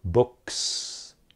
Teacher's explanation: book ends in voiceless sound so books